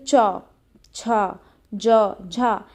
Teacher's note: तो स्पर्श संघर्षी में क्या होगा कि स्पर्श व्यंजन एवं घर्षण व्यंजन दोनों के गुण जिसमें दिखाई दे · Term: स्पर्श संघर्षी व्यंजन